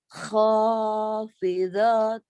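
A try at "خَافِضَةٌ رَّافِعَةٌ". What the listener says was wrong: panjangnya kho sama ro. Ayo diulang.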